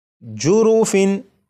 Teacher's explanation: تو یہ جو تنوین ہے تنوین کے نون ساکن کو چھپا کر نہیں پڑھنا بلکہ یہاں پر اسے ظاہر کرنا ہے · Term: اظہار